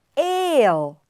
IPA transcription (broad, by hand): eɪl